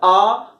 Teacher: तो विव्रत के अंतर्गत आता है हमारा आ। यदि हम लोग बोलते हैं आ तो हमारा मुंह जो है वो पूरी तरीके से खुल जाता है